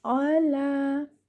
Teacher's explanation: Give it one count and your lam should be given two counts.